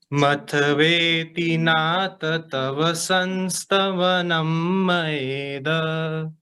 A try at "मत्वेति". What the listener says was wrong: हाँ, अभी आपने मतवेति पढ़ा ना, मतवेति, तो त हलंत है, त आधा है, तो त को आधा ही पढ़ेंगे। हाँ, मतवेति और मतवेति दोनों में अंतर है ना।